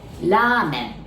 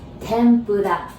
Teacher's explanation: We don't have the R sound in Japanese, so we pronounce it like L